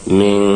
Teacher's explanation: ওই নুন সাকিন তানবিনকে অস্পষ্ট গুন্না করে অর্থাৎ গোপন করে পড়তে হয় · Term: ইকফার গুন্না